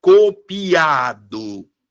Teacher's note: Aqui no caso, ó, a vogal mais forte é o A. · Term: sílaba tônica